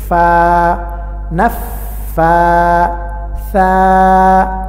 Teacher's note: ফা উচ্চারণ করার সময় সামনের দাঁতের আগা নিচের ঠোঁটের প্যাটে লাগবে এবং বাতাস বের হবে